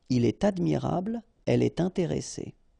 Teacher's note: you should make the liaison, and in that case, it's with T